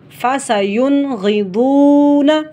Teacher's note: یہاں پر غین اور ضاد یہ حروف مستعلیہ میں سے ہیں، ان کا بھی ہم نے لحاظ کرنا ہے، موٹا اور پر کر کے پڑھنا ہے